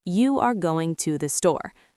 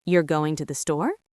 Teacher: with a slight lift on store. That lift is the melody of a question.